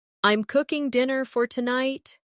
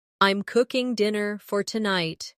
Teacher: The stress is on cooking and tonight.